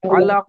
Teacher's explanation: কলকলা হবে, কফের উপর সাকিন হচ্ছে।